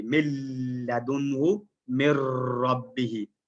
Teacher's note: مرج ہو رہا ہے لیکن غننے کے بغیر ہو رہا ہے